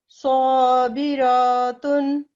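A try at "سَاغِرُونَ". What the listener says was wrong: रॉ को लंबा नहीं करें, साबिरातुन, थोड़ा सा स्वाद को और गोल करें,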